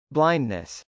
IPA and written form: blˈaɪndnəs (blindness)